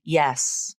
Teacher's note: The tip is down. The sides of the tongue push against the inside of the upper molars, and the base of the tongue tenses. Then the sound is released into the e as in red vowel. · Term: y consonant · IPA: /j/